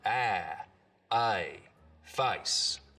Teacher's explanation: So the diphthong in face starts real low, down around ah, face. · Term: face lowering